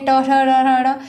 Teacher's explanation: इसी प्रकार से ट वर्ग की ध्वनियाँ हैं वो कहाँ से निकलती है, ट ठ ढ़ ढ़, ये मूर्धन्य ध्वनियाँ हैं, मूर्धा से निकलती है। जब हम ट बोलते हैं तो हमारी जिह्वा है वो ऊपर तालु से सीधे आके जाके हल्का सा टकराती है और वहीं से ध्वनियाँ क्या है उच्चरित होती हैं।